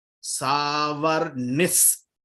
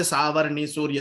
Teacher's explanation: But when I chant together, the Visargam followed by Sa will become Is.